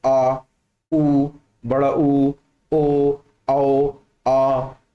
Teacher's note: ये वाली ध्वनियां हमारी पश्च भाग से, जीभ के पिछले हिस्से से आएंगी